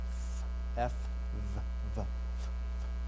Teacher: our fricative actually is a dental labial